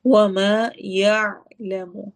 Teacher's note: یا کر کے جھٹکا نہیں دینا ورنہ وہ حمزہ بن جائے گا۔ عین اور حمزہ دونوں میں فرق ہے۔